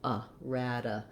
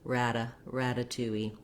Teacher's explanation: basically that's a light d you're not building up a lot of pressure there you're just lifting up · this t is followed by an unstressed syllable the schwa sound a rada so we're going to make this tea more of a flap sound basically that's a light d you're not building up a lot